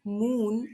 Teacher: A in hat is low front unrounded. U in moon is high back rounded.